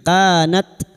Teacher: ka fathah diikuti alif dua harakat mad thabi'i. Kanat ta sukun yang memiliki sifat hamz dan jiddah.